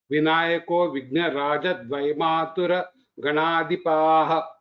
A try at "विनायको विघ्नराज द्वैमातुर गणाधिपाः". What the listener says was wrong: so when you are pronouncing see Vinayako Vighna Mahaprana Vighnaraja Dvaimatura Ganadhipaha Mahaprana has to come out very well. First time you told Vighnarajo, it is Rajo is not there. Vighnaraja, that's all is there.